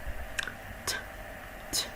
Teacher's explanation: Produce this sound by tapping your tongue right behind your top front teeth and keeping your lips stay gently apart.